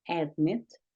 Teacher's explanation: un verbo tiene dos sílabas y la última sílaba es tónica o sea acentuada